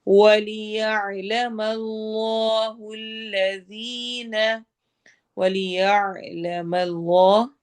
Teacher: اس میں جلالہ کے لام کو ہم نے موٹا کرنا ہے، الذین ذال کو نرمی سے پڑھنا ہے اور یا مدہ کرنا ہے